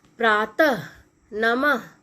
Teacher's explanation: इसे बोलते समय अह की आवाज आती है। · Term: विसर्ग